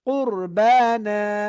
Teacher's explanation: র সাকিন তার আগে পেশ থাকলে মোটা করবেন